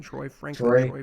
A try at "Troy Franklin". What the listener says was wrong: you have to really pronounce the Troy you can't like skip over that